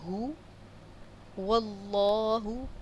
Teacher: اللہ کے نام کو پر پڑھیں گے۔ اس کے بعد پر پڑھنے سے مراد ہوتی ہے موٹا پڑھنا۔